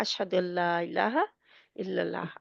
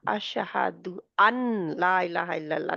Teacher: लाम और रा जो है वो गुन्ने के बगैर आएंगे। हमने पढ़ा है ना, अशहदु अल्ला इलाहा इल्लल्लाह, हम कहते हैं ना अशहदु अल्ला इलाहा इल्लल्लाह, अशहदु अन ला इलाहा इल्लल्लाह नहीं है, ठीक है।